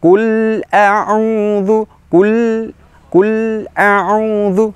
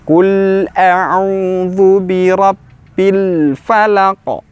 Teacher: Sifat dari huruf lam adalah tawassut, pertengahan, tidak berhenti, tetapi ada suara sedikit yang tidak panjang.